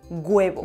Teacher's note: Se pronuncia una G delante del diptongo inicial UA o UE